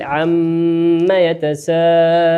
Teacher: الميم في عما ميم مشددة مقدارها حركتين